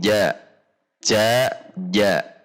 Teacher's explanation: dengan C C bahasa Indonesia c tidak C tetapi ja ja di tengah lidah naikkan ke atas langit Tengah makhrajnya sama dengan Iya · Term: Jim